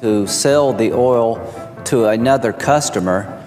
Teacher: is from the northern part of South Carolina and his RS are largely intact